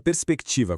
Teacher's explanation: quando se fala rápido, o R quase não sai, parecendo até um som de S duplo. Mas muito cuidado, RS não é um dígrafo, é um encontro consonantal autêntico.